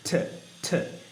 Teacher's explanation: ঠ সাউন্ড উপরের পাটের দাঁতের মাড়িতে প্রেশার দিয়ে বলতে হবে, ভাইব্রেট করতে হবে, একটু ভাইব্রেট হবে।